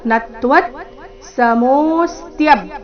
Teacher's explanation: ಮುಂದೆ ತ್ವ ಇದ್ದ ಕಾರಣ ನತ್ವತ್ ನತ್ವ ಆದ ನಂತರ ಅರ್ಧ ತಕಾರ